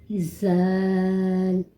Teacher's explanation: زبان کی نوک جب ثنایا علیہ اوپر والے سامنے کے دانتوں کے کنارے سے لگے تو زال ادا کیا جاتا ہے